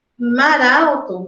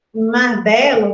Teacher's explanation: mar alto você tem essa juntura mar Belo Você não tem juntura nenhuma